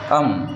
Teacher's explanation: हा जो अम आहे हा नाकातून होते याला म्हणतात नासिक्य वर्ण